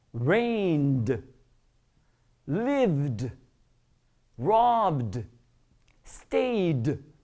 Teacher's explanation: it's a voiced sound coming from your vocal cords. Automatically, it's pronounced not like a T, but like a D.